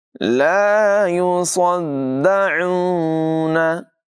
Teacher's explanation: स्वाद की आवाज़ पुर होगी, इसको दाल के साथ मिलाकर पढ़ेंगे।